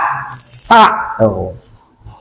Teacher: Sin ujung lidah antara gigi atas dengan gigi bawah. Coba kalau kita menyebutkan huruf sin, kalau tidak ditemukan dulu ini gigi atas dengan gigi bawah, maka tidak bisa menyebutkan huruf sin.